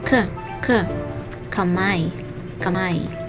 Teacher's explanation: Sa paraan ng artikon, ito ay pasara na walang tinig.